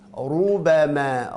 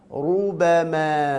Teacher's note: lidah belakangnya diangkat, lidah depannya makhrajnya huruf ra, rubama, dan dimonyongkan karena ra-nya berharakat dhammah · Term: dibaca tebal